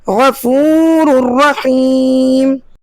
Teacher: اب اگلے کلمے کو پڑھتے ہیں اور آپ دیکھیں کہ دونوں تنوین یعنی 2 زبر کی تنوین اور 2 پیش کی تنوین پہ ہم نے لال تیر کے نشان لگائے ہیں کہ ان میں غنہ نہیں کریں گے، غنہ کے بغیر ملا کر پڑھیں گے، اسے ادغام بلا غنہ کہتے ہیں